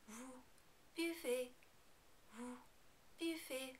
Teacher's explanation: in the vous form, the final EZ is pronounced like A.